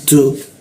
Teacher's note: huruf ta, ujung lidah bertemu gigi dia. Tu ada bocor halus tipis. Tu masuk ke a di mana dijakun dia.